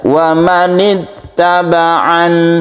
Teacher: dia disukun dan tidak panjang wamanid tabaan gitu aja wamanin tabaan jadi tidak terlalu ditekan ya karena dia sama dengan mim yang sukun dia bersifat tawasut artinya tengah-tengah · Dan kalau kita lihat berhentinya itu ini tidak panjang, jadi jangan dipanjangkan ainnya. Ini hanya sukun nun yang biasa saja. Dia itu tidak bertasydid, dia itu berharokat kasroh.